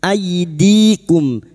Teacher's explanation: Fathah bertemu ya sukun kita lunakkan huruf lin.